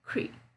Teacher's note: Cree is very short, and I said it very fast, so, and I'm not stressing it either. Create, create.